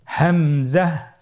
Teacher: হা হরফটি উচ্চারণের স্থান কন্ঠনালীর শুরু হতে অথবা আমরা যদি আরবিতে বলি হলকের শুরু হতে এটা এ হরফটি উচ্চারিত হয় কন্ঠনারীর শুরু থেকে উচ্চারণ করুন হা আলহামদুলিল্লাহ পরবর্তী হরফটির নাম হলো হামজা পরবর্তী হরফটির নাম হামজা হামজা হরফটি উচ্চারণের ক্ষেত্রেও বারিক করে উচ্চারণ করতে হবে এবং এখানে টেনে পড়া যাবে না দ্রুত পড়তে হবে